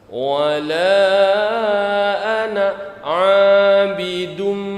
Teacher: Alifnya mati. Jadi dimatikan, dianggap tidak ada.